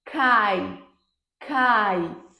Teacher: quando eu digo cai cai não tem pausa se não tem pausa não tem separação logo nós temos vogal e semivogal na mesma sílaba